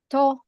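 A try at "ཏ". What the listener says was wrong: Now, it's unaspirated. Okay, no air. To.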